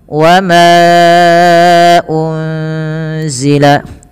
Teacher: Lagi-lagi ada mad jaiz munfasil pada lafal wama. Panjangkannya empat harakat atau lima harakat. · panjangkan ma-nya 4 harokat atau 5 harokat